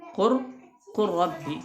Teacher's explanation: huruf lam yang melebur ke huruf ra, ya, pada kalimat qur rabbi